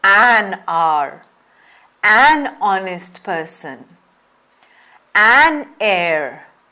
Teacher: they have their first letter silent when spoken and that's the reason why we hear the sound of the vowel instead